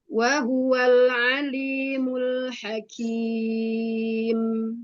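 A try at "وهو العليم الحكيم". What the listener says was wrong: Naam, ainnya mau lebih terasa lagi bainiyahnya di situ. Wa huwal alimul hakim.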